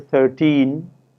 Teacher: given a word such as 13 the stress is on te